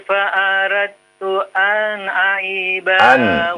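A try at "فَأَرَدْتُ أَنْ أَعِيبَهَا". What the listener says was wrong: Jangan dipanjangkan. Ulang lagi.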